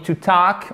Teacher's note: on ne prononce pas le L